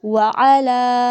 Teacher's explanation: وعلی، یہاں پہ مد ہے، اسے 3 الف کے برابر ہم پڑھیں گے، لمبا پڑھیں گے۔